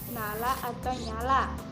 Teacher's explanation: ciri-ciri hidup nasal laminopalatal